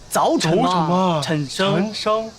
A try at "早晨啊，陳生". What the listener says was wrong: 啊 ， 把 舌 头 捋 直 了 ， 白 话 文 里 面 卷 舌 音 少 。 早 晨 啊 ， 陳 生 。